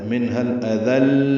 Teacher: لام پر تھوڑی دیر آواز کو روکنا ہے کیونکہ لام مشدد ہے. منها الاذل یعنی رک کر یا دبا کر پڑھنا ہے.